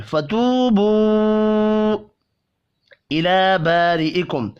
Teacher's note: را زیر کی وجہ سے باریک پڑھی جائے گی. اب یہاں ملا کر پڑھیں گے تو میم ساکن کے بعد فا ہے اظہار شفی ہوگا، غنہ نہیں ہوگا.